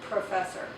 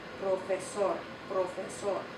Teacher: And you put your hand in front, you can feel it. When you say it in Spanish with the correct pronunciation, there's hardly any puff of air that comes out. You still put your lips together, but you don't really produce that puff. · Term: unaspirated P